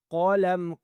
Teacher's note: قاف کو موٹا کرنا ہے آپ نے